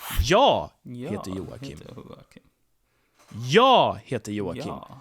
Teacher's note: I stress jag here because that's the most important information to convey here, that I am Joakim, not anyone else here.